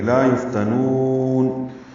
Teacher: لا الف مدہ ہے، یفتنون فا ساکن پہ ہمس ہے، نون کو لمبا کریں گے